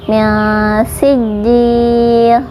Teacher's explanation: kita menyamarkan nun sukun sambil mempersiapkan makhraj huruf sin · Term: ikhfa